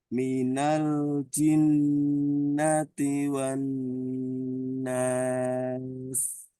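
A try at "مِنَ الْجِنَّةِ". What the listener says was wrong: Jimnya masih ada udara. Jin, jin. Minal ji, ji, ji, ji. Jadi dirapatkan di tengah lidahnya itu, ditempel ke langit-langit. Itu nempelnya nggak ada celah, nggak ada celah udara. Ji, ji. Jadi bukan ji, jin. Jangan, jangan juga terlalu ke ujung. Jin ini pakai ujung. Jin pakai tengah. Ji, ji. Minal jinnati wan nas.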